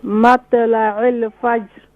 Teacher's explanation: طا is more full mouth